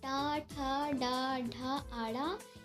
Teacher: टा, ठा, डा, ढा, आड़ा, ये मूर्धा से बोले जाते हैं।